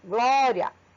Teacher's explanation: Na palavra glória, da mesma forma. É como se dissesse glória, né? Glória. O A, ele sai mais forte